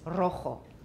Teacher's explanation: A trill is written with a double R, and also if a word starts with a single R in Spanish, that is also a trill